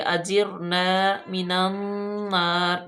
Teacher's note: اجرنا، جیم را، جیر، را کو پور پڑیں گے، اجرنا من النار، نون مشدد آگی، یہ میم مشدد اور نون مشدد کو ایک جتنا ہی لمبا کرتے ہیں، یعنی اتنا ایک جیسا ہی ان پہ غنہ کرتے ہیں۔